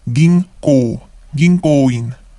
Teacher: N syllable or N becomes NG sound because it is followed by a K or ko.